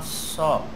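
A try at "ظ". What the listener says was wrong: So. Bukan so, so. Tebal.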